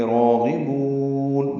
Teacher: راغبون را پر پڑھیں گے، غین بھی پر پڑھیں گے. راغبون با کو لمبا کریں گے، وقفاً مد عارض للسکون ہے، نون ساکن پہ اظہار ہے.